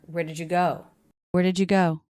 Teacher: the first three words of that less clear definitely flatten pitch unstressed until we get to the stress word go where did you where did you where did you go go · where did you go where did you did you notice that the D and the Y sound are combining to make a j sound